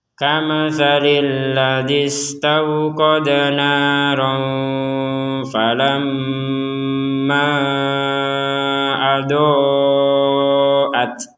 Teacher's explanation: ketika kita ingin menggabungkan falamma dengan ad-doat, maka panjangnya falamma menjadi 6 harokat. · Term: harokat bendera